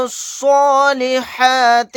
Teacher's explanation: یہاں پر لاسٹ میں جو الف ہے یہ بھی نہیں پڑھا جائے گا. لام کو یہاں پر ڈائریکٹ صاد کے ساتھ ملا دیں گے